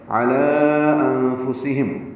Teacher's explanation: انفسہم میں اخفا ہے، نون ساکن کے بعد فا آنے کی وجہ سے. ہم میں اظہار شفوی ہے، ولو واولین ہے.